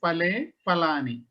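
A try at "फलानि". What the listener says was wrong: The letter ha has to be pronounced correctly. Phalam, phale, phalani.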